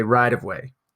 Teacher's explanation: in American English pronunciation, instead of saying right of way, we actually change the T pronunciation to a D.